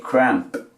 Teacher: Esta A tiremos a decirla más o menos como una E